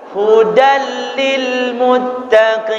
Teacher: hukum idgham bilagunnah dimasukkan dulu dengan cara tidak berdengung khodan khodan dimasukkan ke huruf lam tapi tidak boleh di wudal